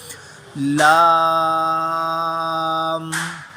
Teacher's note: اینڈ پہ میم کے لیے دونوں ہونٹوں کو ملا دیں گے